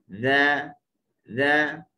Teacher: Huruf dzal adalah huruf yang kita letak hujung lidah di hujung gigi atas.